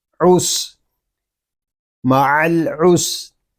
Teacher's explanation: سین یہ حروف سویریہ میں سے ہے، اس میں سیٹی کی آواز آئے گی۔ سین ساکن ہے، اس کو سکون کے ساتھ ادا کریں گے۔